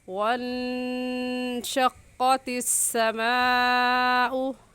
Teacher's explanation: قاف موٹے حروف میں سے ہے، موٹا کر کے پڑھیں گے، اور موٹا کرنے کا طریقہ کہ آپ کے ہونٹ دونوں گول ہو جائے